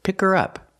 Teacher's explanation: You don't hear the h because the word her is not stressed.